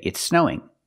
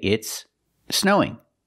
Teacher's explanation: can say it's snowing you don't have to link the words it's more common to link the words and say it's snowing but if you're talking slow you can separate the words